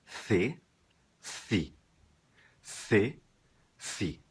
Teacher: mas na Espanha em 90% do território espanhol soa com a língua entre os dentes